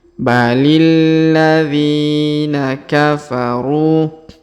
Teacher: huruf ru kita panjangkan dua harakat karena terdapat wau sukun di depannya · kita panjangkan dua harakat karena terdapat Ya Sukun di depannya